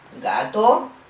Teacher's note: Oclusivo, velar sonoro, un sonido suave.